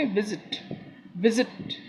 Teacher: target, target, विजिट, ये normal words में हम पकड़ते हैं, मतलब सेकंड वाला जो है स्ट्रेस नहीं है, फर्स्ट वाले में थोड़ा स्ट्रेस है